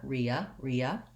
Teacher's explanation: And then in rehabilitated and rehabilitation, I don't say the H sound. We just go right into the schwa sound here, ria. If I said rehabilitated, probably people wouldn't notice, but I think the reason that drops out is that it's easier and smoother to go right from vowel to vowel.